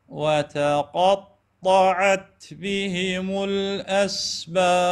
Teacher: شوف شوف شوف شوف كانت وتقى ممتازه، لكنه لما راحت على الطا ايضا الطا مفتوحه، فانا همين اجيبها تفخيم مالتها، وتقطعت القاف والطاء، والطاء راح تكون شويه فيما يبدو للسامع اعلى قليلا لان فيها اطباق